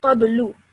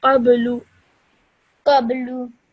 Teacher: This lu should only be said for 1 second because of the simple dhamma.